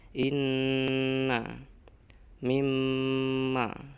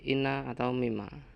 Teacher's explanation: Artinya ghunah atau mendengung itu wajib dijelaskan pada mim dan nun yang ditasdid. Mim nun yang ditasdid harus dibaca mendengung. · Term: gunnah